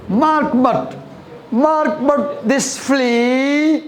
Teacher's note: So this is unstressed, stress, unstressed, stress. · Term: iambic